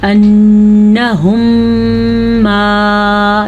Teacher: انہم ما، یہاں پہ جو غنہ ہم نے کیا ہے کیونکہ میم ساکن کے بعد میم دوبارہ آ گیا ہے تو یہاں پہ ادغام شفوی کا قاعدہ ہوگا، یعنی کہ غنے کے ساتھ کیا جائے گا